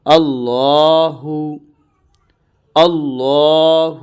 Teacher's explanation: یہ منہ بھر کے پڑھا جائے گا، اور اس کے آخر میں ہا کی آواز آئے گی۔